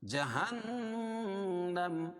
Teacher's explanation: نون مشدد میں غنہ ہوتا ہے